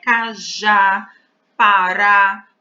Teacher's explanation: Percebam que em cajá, a sílaba forte é o já, porque é ela pronunciada com mais força.